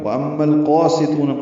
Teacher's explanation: وَأَمَّا میم مشدد پہ غنہ ہے اور میم کو القاسطون کے لام سے ملانا ہے